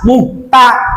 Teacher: Ta dari mana? Ujung lidah dengan gusi gigi yang atas.